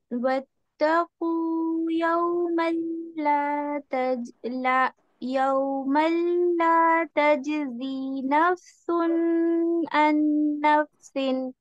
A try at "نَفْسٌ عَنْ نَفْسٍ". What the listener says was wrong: دیکھیں نفس نہیں ہوگا وقف. نفسن. ایک پہلی مسٹیک یہ نوٹ کریں کہ یہاں پہ بہت زیادہ غنہ نہیں دینا کرنا، آپ نے صرف ظاہر کرنا ہے.